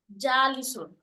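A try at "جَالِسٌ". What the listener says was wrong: জালিসুন, right.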